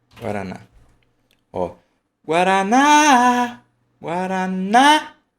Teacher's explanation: a sílaba forte e mais prolongada é a última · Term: oxítona